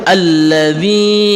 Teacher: allzi itu merupakan alif lam syamsiah juga akan tetapi khusus daripada alif lam syamsiah yang bertemu dengan lam maka lamnya dijadikan satu dan hanya diikuti oleh tasdid saja dan lam yang pertama itu dibuang untuk memudahkan kita membaca Alquran